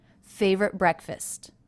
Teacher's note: favorite was pronounced as a stop favorite favorite favorite breakfast so there was no release of the T sound